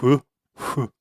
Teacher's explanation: That syllable in Japanese, it's not really an F sound like it is in English. It almost sounds a little more like you're just kind of blowing out air, like hu, hu.